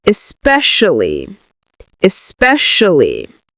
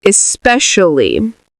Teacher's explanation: So the second syllable has the stress.